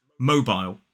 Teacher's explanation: 2 syllables, the stress is on the first. In American English, it's more like mobile.